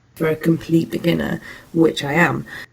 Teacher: So you can see here in the Pratt graph that the second tone unit is produced in a lower pitch level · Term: low key